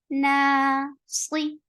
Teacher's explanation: Sli is short, heavy, and the kasra is E sound and very short.